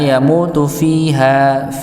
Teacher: Yamutu, mu-nya panjang 2 harakat juga. · fiha panjang dua-duanya. Ya, ya sukun sebelumnya kasrah pada huruf fa.